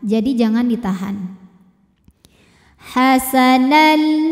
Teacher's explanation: Jika terus hukumnya ini adalah idgham bila gunnah karena tanwin fathah menghadapi huruf lam. Maka tanwin kita masukkan ke lam hasanal tanpa kita dengungkan. Jadi jangan ditahan.